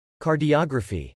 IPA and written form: kɑɹdiəɡɹəfi (Cardiography)